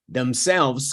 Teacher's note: Themselves got the stress in the second syllable.